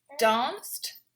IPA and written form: dɑːnst (Danced)